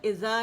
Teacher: زبر و زیر کے درمیانی حالت ہے جو کہ غلط ہے